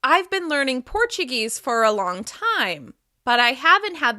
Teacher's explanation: For becomes fer and to becomes ta. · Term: weak or reduced forms